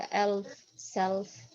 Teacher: اللام كأنها مفخمة هكذا.